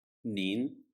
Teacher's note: Apparently, it rises in pitch. It starts from a lower pitch and ends at a slightly higher pitch. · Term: second tone